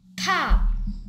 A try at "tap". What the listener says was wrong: 탑이에요? 탑이에요, 소리가? 소리가 탑이 아닐 텐데. 탑이 아니고 탭이 아니에요, tap. Tap. Tap.